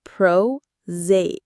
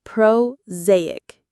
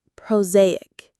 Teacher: The stress is on the second syllable, zay.